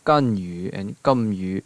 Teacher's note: English G's are voiced because your vocal folds are vibrating. In both Mandarin and Cantonese, that G-like sound is actually a K without aspiration, K without the puff of air.